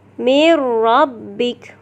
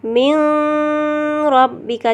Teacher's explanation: Dengan memasukkan sebutan nun atau tanwin ke dalam huruf ra dan lam tanpa dengung. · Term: idgham bila gunnah